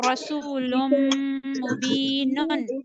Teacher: Lam double dama will connect with meme. Make it nasal. There is idgham ma'al gunna.